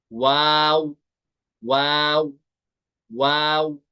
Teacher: वाव अदा होगा दोनों होंठों को गोल करके।